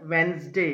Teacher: ఇది Wednesday కాదండి, Wednesday. D is a silent letter here. We need not pronounce the letter D here.